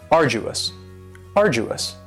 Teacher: you don't hear that D sound that much. It's not very strong. It almost sounds a little like a J.